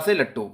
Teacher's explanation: इसका उच्चारण करते समय जो वायु होती है वो जीभ और तालु का स्पर्श करके इनके पास से निकल जाती है। जीभ और तालु, जीभ और तालु इनका स्पर्श करके आपस से निकल जाती है, मतलब इनके पास से निकल जाती है, ठीक है। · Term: पार्श्विक व्यंजन